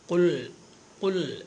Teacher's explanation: ഖുൽ ഖുൽ എന്ന് പറയുമ്പോൾ ആ ഖാഫിന് ദമ്മ് വേണം. ദമ്മുണ്ടാവണമെങ്കിൽ 2 ചുണ്ട് കൂർപ്പിച്ച് പിടിക്കണം,